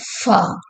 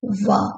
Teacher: f is a voiceless one and v is voice